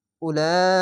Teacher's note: চার আলিফ টান মোটা চিহ্নটি চার আলিফ টেনে পড়তে হবে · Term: মাধ্যে লাজিম